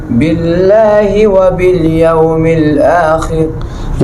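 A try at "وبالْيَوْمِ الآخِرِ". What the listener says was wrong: यहाँ रा क्या होगा भाई? बारीक होगा। रा बारीक क्यों बारीक होगा बताओ? किस पे जेर है? रा के नीचे जेर तो नहीं है। खा के नीचे जेर है।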